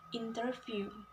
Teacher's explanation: three syllable words with stress on the first syllable